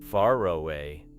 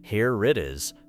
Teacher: In some accents, you may also hear an R-like sound connecting words. For example, far away may sound like far away or here it is may sound like here it is.